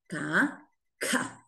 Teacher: Aspiré, expiré un poquito de aire.